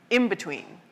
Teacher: that N in between will also start to sound more like an M